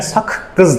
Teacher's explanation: Məsələn, saqqı sözündə iki dənə q yanaşı gəlib. Birinci q olur özü qarşılığına keçir. Kar qarşılığı olur k. Yəni sakqız deyəcəksən. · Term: kar qarşılığına